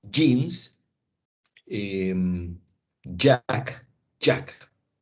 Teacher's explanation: Primero se detiene el aire, después se deja ir, ¿cierto? Un poco de fricción.